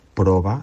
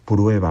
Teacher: con O, sin la diptongación propia del castellano